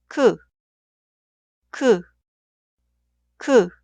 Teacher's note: la lengua no toca ninguna parte de la boca. Los labios se ponen planos y transversos como la forma de la vocal y los dientes de arriba y abajo pegados. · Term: vocal 으